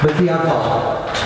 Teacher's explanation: This appears in Talmudic manuscripts as b'diavad, in which we've not only the ayin is not pronounced, but also the dalet at the end